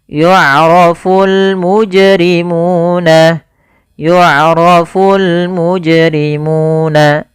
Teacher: ketika melafalkan qalqalah itu yaitu pantulkan saja secara langsung · suara munya dipanjangkan dua harakat. Kemudian bisimahum pada lafal si dan ma ini sama sebagaimana ketika kita memanjangkan mu yaitu dia mad thabi'i panjangnya dua harakat.